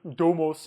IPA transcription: domos